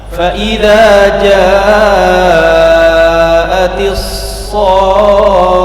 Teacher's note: kha-nya jangan lupa dialirkan 1 harokat ya. Fa idza ja'atis sakhah, 1 2 3. · Jadi as-sakhah sodnya ini dipanjangkan 6 harokat, di ujungnya diangkat sedikit, naber, tidak berlebihan ya, diangkat sedikit. Fa idza ja'atis sakhah, kemudian kha-nya jangan lupa dialirkan 1 harokat ya.